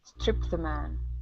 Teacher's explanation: what you want to do is mush this t sound together with the word the